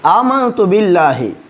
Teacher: یہاں پہ ہم اخفا کریں گے کیونکہ یہاں نون ساکن آیا ہے۔ آمنت باللہ، اس باللہ لفظ اللہ کو، یہاں پہ لفظ اللہ کو باریک پڑھیں گے کیونکہ یہاں پہ با سے نیچے زیر ہے۔